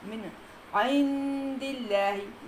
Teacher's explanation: من عند، من عند جو ہے وہ اظہار ہے، اس میں آپ کے نون کو ظاہر کر کے جلدی سے پڑھنا ہے۔ من عند اللہ، یہ اکفا ہے، نون ساکن کے بعد دال ہے، یہ اکفا ہے۔